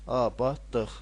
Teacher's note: Abadlıq sözünün vurğusu sonuncu hecadadır.